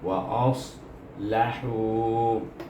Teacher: dia isti'la, terangkat pangkal lidah kita apabila menyebut huruf sad